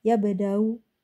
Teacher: Kalau ibdal nggak bisa ya di raum gitu. Ya, jadi yabda'u u-nya kecil bacanya karena dia raum ya, sepertiga harokat. Yabda'u ya, tashil biraum namanya.